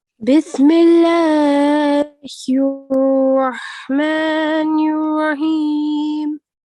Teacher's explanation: I could hear the ha, which was very nice from the middle of the throat.